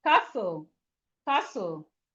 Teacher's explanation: The T in castle is silent.